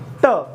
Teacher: ट बोलने में जीभ जहां ऊपर जिस भाग को टच कर रही है वही भाग क्या कहलाता है मेरा मूर्धा कहलाता है।